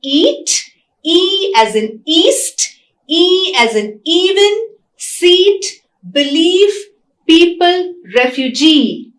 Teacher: It's a long vowel, it's E. It's also a front vowel, right?